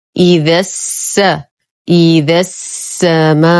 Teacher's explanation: إذا السماء، ننتقل من فتحة الذال إلى إسكان السين. حرف المد يسقط بسبب التقاء الساكنين. الساكن الأول هو حرف المد، والساكن الثاني هو بداية التشديد بحرف السين، ونحن نعلم أن بداية التشديد سكون. · الساكن الأول هو حرف المد، والساكن الثاني هو بداية التشديد بحرف السين، ونحن نعلم أن بداية التشديد سكون. اللام شمسية مدغمة في السين، فلا أعتبرها حرفا ساكنا لأنها لا تلفظ، تسقط لفظا لا رسما.